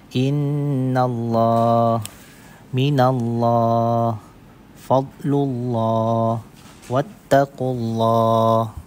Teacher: ditebalkan bunyi huruf lam pada lafzul jalalah yang didahului oleh huruf yang berbaris di atas atau di depan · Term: Tafkhim